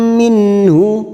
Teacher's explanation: nun sukun bertemu ha idhar halqi. Kita baca jelas.